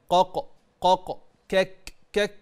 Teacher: والقاف والكاف من اقصى اللسان